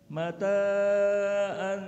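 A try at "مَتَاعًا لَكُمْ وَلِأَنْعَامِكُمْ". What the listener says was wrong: Ta dua. Mata kelebihan. Mata'an lakum wa li'an'amikum.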